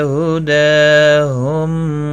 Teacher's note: ہدا دال کے اوپر کھڑی زبر ہے، ایک الف کی مقدار کے برابر کھینچ کر پڑھیں گے۔ ہم نیم ساکن کے بعد واو آیا ہے، اظہار شفوی ہوگا۔